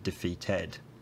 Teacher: in the last syllable of the word defeated he has a fairly fronted quality almost as if he's saying defeated although whether that is actually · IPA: [ɛ̈]